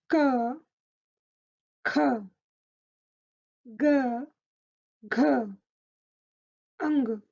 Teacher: The sounds alternate between unaspirated and aspirated sounds. So one is said without puff of air and the next sound is said with a puff of air.